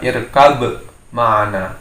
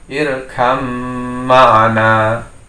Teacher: huruf ba di sini menjadi tasdid pada mim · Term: idgham mutajanisain